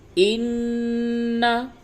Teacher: इन्ना नून के ऊपर ज़बर है, उसको जल्दी से पढ़ेंगे और तशदीद होने की वजह से गुन्ना करेंगे।